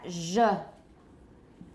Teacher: all you do is take the voiceless counterpart of this sound which is sh and add voicing